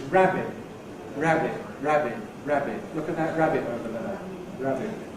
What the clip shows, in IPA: ˈræbɪʔ